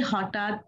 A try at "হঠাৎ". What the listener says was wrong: আবার ট হয়েছে, হঠাৎ হয়েছে। হঠাৎ ঠ লেখা। সবসময় স্পেলিং গুলো খেয়াল করবেন, তাহলে উচ্চারণ গুলো স্পষ্ট হবে। যেখানে ট আছে না থ আছে, ত আছে না থ আছে, এইগুলো স্পেলিং ভালো মতো তাকিয়ে খেয়াল করলেই উচ্চারণ স্পষ্ট হয়ে যায়।